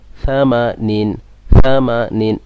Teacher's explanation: কোনো সিটি যাতে বের না হয় সেদিকে খেয়াল রাখবেন এটা সা এটা শিন নয়